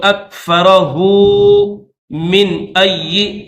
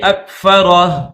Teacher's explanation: اگر ملا کر پڑھیں گے تو اکفرہ من ای یوں پڑھیں گے، وقف کریں گے تو ہو نہیں پڑھیں گے